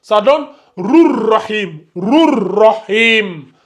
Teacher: Par contre, il y a la fusion. Le ra là, il fusionne avec le ra précédent.